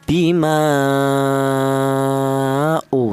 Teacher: panjangnya yaitu 2 alif setengah atau lima harakat atau lima ketukan. Bima u seperti itu. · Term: mad jaiz munfasil